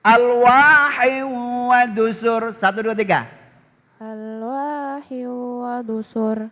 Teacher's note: Dan juga wadusur. Di sini ro-nya takrir.